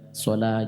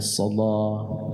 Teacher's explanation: Di Warsh, dia memang mengubah beberapa hal, seperti taghliz dari lam, dari 'sala' menjadi 'sala'.